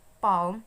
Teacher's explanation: Example, like in the vowel sound A, like in the word palm, the native speaker's jaws are wide apart. So Williamson called this as the open vowel sound.